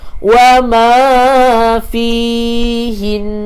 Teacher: Matikan dengan nun berserta dengan dengung sebab ada tanda sabdu. Dengung dua harakat.